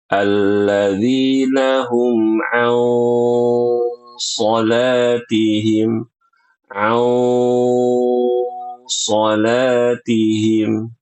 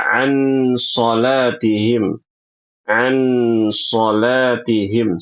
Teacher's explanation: Perhatikan ikhfa di sini ghunahnya tebal